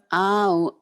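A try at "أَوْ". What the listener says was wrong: Jangan au ya Bu ya. Au gelap. Jangan au ya Bu. Karena ini huruf dasarnya a. Kalau huruf dasarnya o kayak sow, row, sow, kow itu bunyi o. Ini hurufnya a, bunyi a. Au ya Bu.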